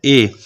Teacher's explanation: ए के उच्चारण स्थान का नाम है कंठ तालव्य।